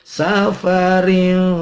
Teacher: layin, au ala la itu 2 ketuk, mad tabi'i. Safarin ada tanwin ketemu fa, ikhfa ma'al gunnah